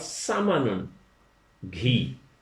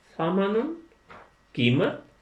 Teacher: سین میں سیٹی کی آواز لائیں گے تو وہ سامانن جو بنے گا اس کا مطلب گھی ہوگا، اور نرم رکھیں گے سامانن تو وہ قیمت ہوگا